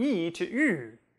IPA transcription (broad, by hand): i to y